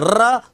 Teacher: ऐसा लगता है जैसे जीवा से लुढ़क रहा हो, इसलिए इसे लुंठित वर्ण भी कहते हैं